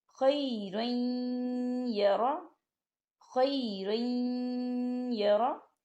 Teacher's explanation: را کے اوپر تنوین ہے اور تنوین کے بعد یا آ رہا ہے، اور یا جو ہے حروف ادغام میں سے ہے، اس کے اوپر تشدید ہے۔ ہم تنوین کو یا کے ساتھ ملائیں گے اور تنوین کو یا کے اندر مدغم کریں گے